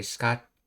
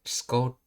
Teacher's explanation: what normally you would say scotte here, but it's scote with just one T sound in it